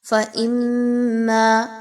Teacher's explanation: میم مشدد کا غنہ ہوگا، میم الف زبر ما، الف مدہ ہے، 1 سے 2 الف کے برابر اس کی ادائیگی ہوگی